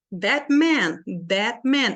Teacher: that Man as duas palavras são tônicas that Man eu não posso falar rápido aqui that Man senão